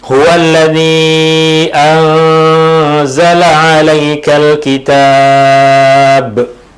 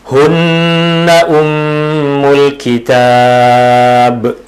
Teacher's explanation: Mad 'arid li sukun dan juga qalqalah, sebab ketika kita waqaf pada huruf ba, huruf ba menjadi sakinah, menjadi sukun, dan ianya adalah qalqalah